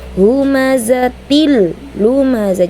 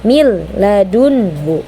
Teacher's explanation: kasrotain bertemu dengan lam, dileburkan tanpa disertai dengung. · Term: idgham bila gunnah